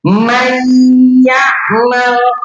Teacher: Nah, berarti nun sukun di sini dia masuk ke dalam huruf ya. Jadi, nunnya itu sudah enggak dibaca lagi, langsung ke huruf ya. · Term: idgham